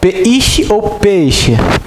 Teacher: Então o E é a vogal, porque é a mais forte. O I é a semivogal.